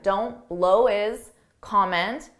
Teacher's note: notice on his, I drop that H and I combine those two together